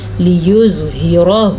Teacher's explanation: را کو پر پڑھنا ہے کیونکہ را کے اوپر زبر ہے اور ہا کے مخرج کا دھیان رکھنا ہے.